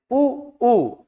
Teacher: जैसे ही आपने उच्चारण किया उ ऊ का तो पुनः जीभ कैसे हो गई? पीछे की ओर हो गई।